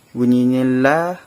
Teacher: lam berjumpa dengan alif, bunyinya la, panjangnya juga 2 harakat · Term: mad asli